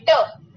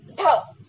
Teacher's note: कुछ व्यंजन उत्क्षिप्त है, मतलब मूर्धन्य, उच्चारण के समय जीभ पीछे की ओर एक झटके के साथ गिर जाती है।